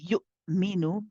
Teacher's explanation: The hamza again is shiddad. Again, we're going to abruptly stop the sound of our voice as we say this.